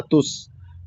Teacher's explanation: जब सीन साकिन है तो इसको अच्छे से अदा करेंगे और सीटी की आवाज भी जाहिर होगी